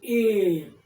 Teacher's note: यदा पश्यतु ए कंठ इत्यस्य कार्यमपि भवति, तालु इत्यस्य कार्यमपि भवति। अर्थात ए एवं ऐ इत्ययोः वर्णयोः उच्चारणस्थानं कंठ तालु च स्तः।